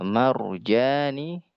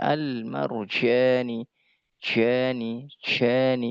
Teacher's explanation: jika engkau mengucapkan huruf jim dengan lemah maka bunyinya akan bercampur dengan huruf huruf syin